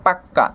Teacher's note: শব্দের অন্তর্গত ব্যঞ্জন ধ্বনিটা 2 বার উচ্চারণ হবে, এটাকে বলা হয় দ্বিত্ব ব্যঞ্জন